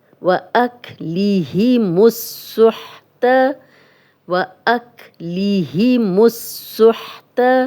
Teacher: اب لام اور الف نہیں پڑھا جائے گا۔